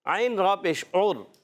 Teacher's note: عین کی ادائیگی ہوتی ہے حلق کے درمیان والے حصے سے